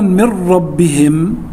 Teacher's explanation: نون ساكنة بعد حرف الراء، والراء من حروف الإدغام بغير غنة